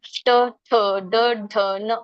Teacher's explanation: ಟ ವರ್ಗ ಅಂದ್ರೆ ಮೂರ್ಧನ್ಯ, ಅಂದ್ರೆ ನಾವ್ ನಾಲ್ಗೆ ತುಟಿ ಮೇಲೆ ಅಂಗಳಕ್ಕೆ ಹೋಗಿ ಹತ್ತತ್ತೆ. ಠ ಅಂದ್ ನೋಡಿ, ಟ ಠ ಡ ಢ ನ ಮೇಲೆ ಹೋಗಿ ಹತ್ತತ್ತೆ.